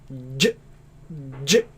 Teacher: Now if you remember jim, j, j, j, the middle of the tongue touches the middle of the palate, right? And there's a complete closure.